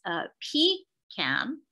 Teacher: pecan with the stress on the first syllable